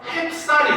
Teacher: 이 해라고 하는 접두사가 유일하게 쌀이라고 하는 명사랑 붙으면은 얘가 어떻게 되냐? 햅쌀이 됩니다. 갑자기 뜬금없이 비읍 받침이 생기게 돼요.